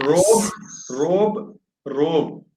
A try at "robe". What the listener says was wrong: Wait a moment. You're rolling the R. Robe.